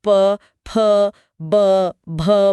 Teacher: बिना दोनों होठों को आपस में टच किए प, फ, ब, भ बोला ही नहीं जा सकता। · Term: ओष्ठ्य ध्वनियां